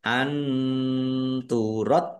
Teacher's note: Nun sukun bertemu dengan huruf ta. Bacaan ikhfa dibaca samar-samar. Dalnya ada tasdidnya dibaca dobel ditekan dan ditahan biar tampak dobelnya.